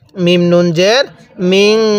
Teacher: এই জায়গার মধ্যে নুন সাকিনের পরে শিনটি হলো ইকফার হরফ, এজন্য আমরা নুন সাকিনটা গুন্নাহ করে পড়ব।